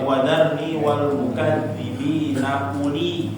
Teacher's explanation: U-nya nggak panjang ya karena ada bulatan di atas waw-nya